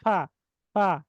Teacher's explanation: মাখরাজ কিন্তু আস্তে করে ধাক্কা লাগতেছে লাগার কারণে শ্বাসটা কিন্তু হা মুখ কিন্তু বন্ধ হয়ে যাচ্ছে না বাতাস কিন্তু প্রবাহিত হচ্ছে